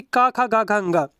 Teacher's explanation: जो का वर्ग वाले अक्षर होते हैं, जैसे कि का, खा, गा, घा, अंगा, ये कंठ का स्पर्श करते हैं। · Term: कंठ व्यंजन